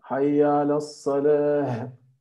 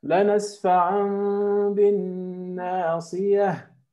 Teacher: The ta becomes ha, right? If you stop, it's a ha. It's not ta.